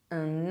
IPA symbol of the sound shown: ks